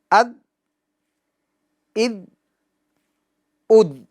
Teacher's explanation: ذال کے مخرج میں آواز کو جنبش نہیں دینا ہے، کیونکہ یہ حروف قلقلہ میں سے نہیں ہے، بلکہ آواز مخرج میں جا کے رک جائے گی۔